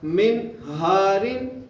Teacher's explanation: نون ساکن کے بعد ہا آ گئی ہے حروف حلقی میں سے، اس لیے میں یہاں پر غنہ نہیں کروں گا